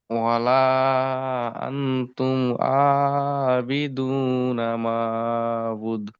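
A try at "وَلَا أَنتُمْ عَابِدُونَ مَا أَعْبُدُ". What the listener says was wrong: মাটা টান দেন, মাদ্দে মুনফাসিল। ওয়ালা আনতুম আবিদুনা মা আবুদু। এই তুমটা গুন্না করেছেন, এখানে গুন্না হবে না, ঠিক আছে জি।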